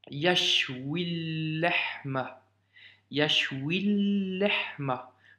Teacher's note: Donc, le lam ici disparaît.